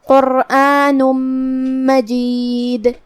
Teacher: آخر میں نون پہ تنوین پیش ہے، پھر حرف المیم آتا ہے کلمت مجید میں، یہاں بھی حکم ہے ادغام، تو ہم یہ تنوین کو میم میں داخل کر کے غنہ اور تشدید کے ساتھ یہ حکم کو ادا کریں گے